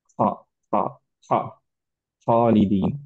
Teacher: যারা এই সাউন্ডটা জেনারেট করেন তারা গয়নের একটু উপরে খটা জেনারেট করেন। · খ, খ, খ, খালিদিন, এরকম একটা স্নোরিং সাউন্ড আসে